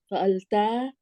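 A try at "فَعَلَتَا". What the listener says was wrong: There was another mistake in number 5. As I have told you before, it's not fa'alta, it's fa'alata. So lam has a fatha in the fa'alata.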